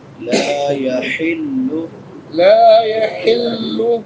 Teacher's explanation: لا يحل لا لام کے بعد الف مدہ ہے، الف سے پہلے خبر ہے، ایک الف کے برابر لمبا کریں گے۔ لا يحل حا چھوٹی حا ہے، حلق کے کون سے حصے سے ادا ہوگی؟ وسط حلق سے